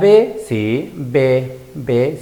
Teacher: ¿Y qué sonido se produce al juntarse dos labios? La B, sí, B, se juntan dos labios. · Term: bilabiales